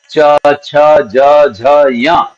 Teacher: इनकी तालव्य संज्ञा होती है तालू से बोले जाते हैं